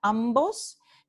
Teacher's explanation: Los alófonos oclusivos b, d y g siempre aparecen después de una consonante nasal. Entonces, en la palabra ambos, tenemos aquí una consonante nasal y después de la consonante nasal ocurre la consonante oclusiva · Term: alófono oclusivo